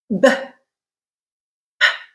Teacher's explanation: You're letting pressure build up into your mouth, right behind your lips, because that is the place of constriction for a B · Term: stop